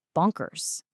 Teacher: It ends with a soft Z sound because of that S at the end. So, it's not a sharp hissy S.